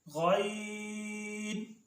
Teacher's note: غین ادا ہوتا ہے ادنی حلق سے یعنی منہ کی طرف والا حصہ